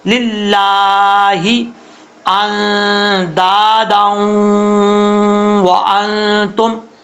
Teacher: نون ساکن کا اخفاء ہوگا ، دال کے آگے الف ہے، اس کو 1 الف کی · لفظ اللہ سے پہلے زیر ہے، اس لیے اس کو بریک پڑھیں گے، پر نہیں پڑھیں گے